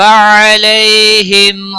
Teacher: علی یالین ہے تھوڑا نرمی کے ساتھ کھینچ پر پڑھیں گے